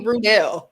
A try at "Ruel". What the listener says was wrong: You added a D.